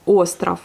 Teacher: vu qu'elle est accentuée, elle ne se prononce pas A, mais elle se prononce bien le O. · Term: la lettre O